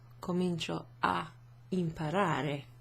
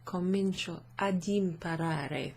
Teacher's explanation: A little d might be placed after the a to make it easier to pronounce and also to separate the preposition a from the next word which starts with a vowel.